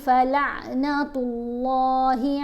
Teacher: یہاں پر تا کے اوپر پیش ہے اس لیے اللہ کی لام کو موٹا پڑھیں گے